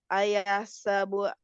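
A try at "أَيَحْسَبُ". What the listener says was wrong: Ayah, haknya kasih sifatnya, hak sukunnya. Sukunkan dulu, jangan buru-buru.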